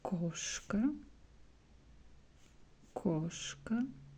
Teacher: Koshka is a cat, and here we also see A, but stressed vowel here is O, so we pronounce koshka, koshka.